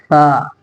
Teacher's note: ثا دونوں دانتوں کے بیچ میں لائیں گے